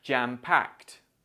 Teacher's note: this ed sound sounds like t, because packed ends in a k sound